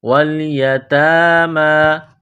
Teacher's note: تا اور میم کے اوپر کڑا زبر ہے، ایک الف کے لمٹ میں کھینچنا ہے